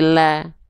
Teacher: Kalau dia karakternya tebal, terdengarnya akan seperti vokal O. Nah, karena huruf lam ini termasuk ke dalam huruf yang tipis, maka dia nggak dibaca lo, tapi la, ya, dibacanya dengan vokal A. Maka setiap vokal A tipiskan pelafalannya.